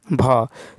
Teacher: तो हिंदी की स्पर्श घोष महाप्राण उष्ट ध्वनि जो है भ है।